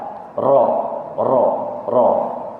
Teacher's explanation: Iaitu apabila menyebut ra, tu ada bunyi getar. Ra. Itu maksudnya takrir.